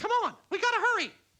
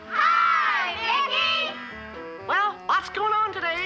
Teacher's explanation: And the man aged, and of course, as I say, the smoking dried out the vocal cords, which lowered the pitch.